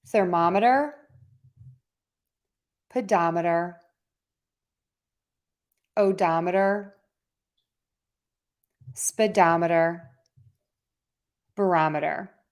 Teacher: we would pronounce the suffix as meter and stress right before the meter